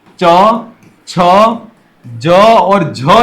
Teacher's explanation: च, छ, ज और झ जो हैं वह स्पर्श संघर्षी व्यंजन है।